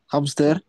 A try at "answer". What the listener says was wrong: No pronuncien la W. Answer suena más inglés americano. Y ya, answer or answer, dicen los británicos.